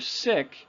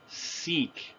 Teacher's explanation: So if my first word is sick, replace the I sound with the long sound E